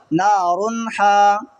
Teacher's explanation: آگے والا حروف ہے نار حامیتن، نون الف زبر نا، را کے اوپر 2 پیش کی تنوین ہے، 2 پیش کی تنوین کے بعد میں حروف حلقی کے 6 حروفوں میں سے ہا آ رہا ہے تو یہاں ہوگا اظہار، بغیر غنہ کے جلدی پڑھیں گے۔